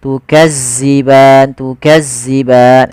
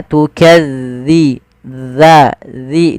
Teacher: tipis zalnya, tu tidak ada desis